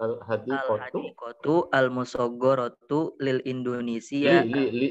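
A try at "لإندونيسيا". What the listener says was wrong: Jangan lil Indonesia, li Indonesia.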